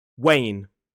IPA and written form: weɪn (Wane)